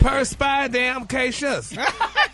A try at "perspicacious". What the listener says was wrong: Ain't no damn in there, But make it like all one word.